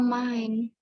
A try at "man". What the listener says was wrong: Oh, bukan main, tapi man aja.